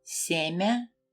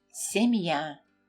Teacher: Now you can hear the Y sound clearly, because the soft sign separated the consonant from the letter Ya.